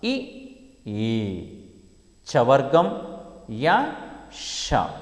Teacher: తాలువు సహాయముచ్చే పలకబడేవి తాళవ్యములు